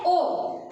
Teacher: इसमें हमने देखा है कि वृत्तामुखी क्या है, वृत्तामुखी जिसमें मुख जो होता है बोलने पर कैसा बन जाता है, ओ। प्रयत्न करते हैं हम तो वृत्त के आकार के बन जाता है, मतलब गोल बन जाता है